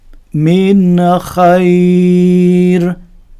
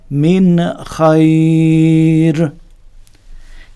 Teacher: মিন খাইর, মিন বলে গুন্না করা যাবে না, এখানে ইজহার গুন্না ছাড়া হয়। সুতরাং আমরা এখানে গুন্না করব না, জাহির করে ক্লিয়ারলি গুন্না ছাড়া পড়ব এইভাবে, মিন খাইর।